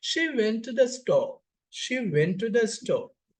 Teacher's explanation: this is about the fall of voice, fall of pitch of the voice at the end of the sentence or else phrase. Typically, this indicating a statement or command. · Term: falling terminal juncture